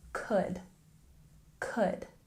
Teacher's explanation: Even though there's an L here in this word, we don't pronounce it. We say could, could.